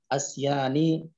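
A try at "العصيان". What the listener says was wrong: Bukan A.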